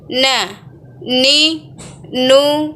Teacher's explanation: dilafalkan huruf nun dengan menjatuhkan lidah terdekat dengan langit-langit bagian depan